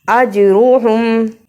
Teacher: قلقلہ کیا جیم پہ، را کو پر پڑھا